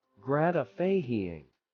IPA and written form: ˈɡræt.ɪ.faɪ.ɪŋ (gratifying)